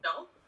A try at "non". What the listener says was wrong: Okay, the N would be a little bit more nasally. It's not pronounced, so it's no. So imagine so whenever I say something is nasally, imagine plugging your nose like this and going no. I should do, imagine plugging your nose like this and saying no.